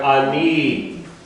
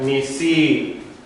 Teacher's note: what the yud does is it elongates the sound. Okay, it makes the sound longer. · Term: chedek yud